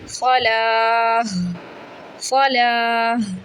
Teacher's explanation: گول تا وقف میں ہائے ساکنہ میں بدلتا ہے